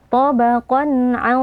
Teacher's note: Cara membacanya, tanwinnya kita baca dengan jelas tanpa berdengung. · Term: izhar halqi